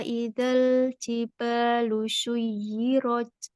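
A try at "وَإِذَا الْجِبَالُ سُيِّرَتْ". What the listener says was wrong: Lebarkan lagi ujung lidah pada lam. Wa jangan shui. Dia sin yang ujung lidahnya ke gigi sari bawah.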